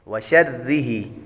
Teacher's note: شین کے بعد را بھی باریک ہے اس لیے اس کو باریک پڑھیں گے